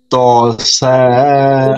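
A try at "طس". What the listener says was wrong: না, সা না, এটা সিন, দেখেন এই যে একটু বলে নেই।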